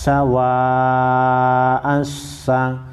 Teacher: بڑی مد ہے 5 الف کے مقدار کھینچیں گے